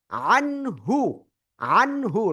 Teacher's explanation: নুন সাকিনের পরে হা ইজহারের অক্ষর স্পষ্ট করে পড়বো